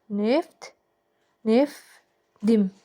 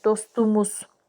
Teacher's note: Amma sait gələndə d-yə keçəcək.